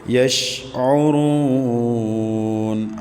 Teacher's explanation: عین وسط حلق سے ادا کریں گے۔ را کے اوپر پیش ہے تو پیش کی وجہ سے اس کو پور پڑھیں گے۔